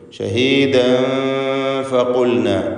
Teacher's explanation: ഇഖ്ഫ വീണ്ടും വരുന്നു, തൻവീൻ ശേഷം ഫ.